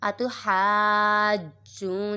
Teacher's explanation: آگے واو سکن سے پہلے پیش ہے واو مدہ اور اس کے بعد بھی تشدید آ رہی ہے تو ادھر بھی مد لازم ہو رہا ہے. اور جیم کے اوپر جو تشدید ہے تو جیم کے اوپر قلقلہ کریں گے